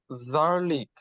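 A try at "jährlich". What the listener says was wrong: ইয়ারলিশ, হ্যাঁ, এই যে যেটা সবসময় ইয়া উচ্চারণ হবে, হ্যাঁ, ইয়ারলিশ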